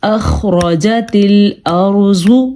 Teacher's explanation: ہم نے خا کے مخرج کا خیال رکھا ہے، اور پھر ہم نے خا کو پر پڑھا ہے کیونکہ خا حروف مستعلیہ میں سے ہے۔ · یہ را ساکن ہے اور اس سے پیچھے والی حرف پہ زبر ہے تو یہ را پر پڑھا جائے گا۔ اگر یہاں پہ پیش ہوتا تو بھی را پر پڑھا جاتا۔